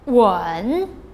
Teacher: the third tone the falling rising tone